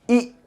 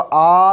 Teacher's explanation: कभी कभी क्या होता है कि कोई जैसे हम शब्द बोल रहे हैं तो ये जो जीभ होती है ये तालु को आगे से ऐसे करके ऐसे बंद कर देती है, ठीक। कभी कभी जैसे हमने बोला ई तो बंद कर दी, मैंने बोला आ तो पूरा खुल गया